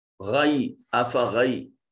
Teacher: غین جو ہے یہ حرف استعلاء ہے، اس وجہ سے اس کو مفخم پڑھا جائے گا۔